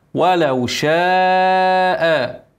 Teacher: مد ايه متصل ما يقلش عن اربع حركات